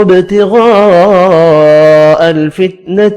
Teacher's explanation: با ساکن پر قلقلہ کرنا ہے. غین پر پڑھا جائے گا، بڑی مد کو 5 الف کی مقدار میں کھینچ کر پڑھیں گے.